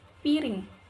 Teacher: R sentuhan cepat atau bicara cepat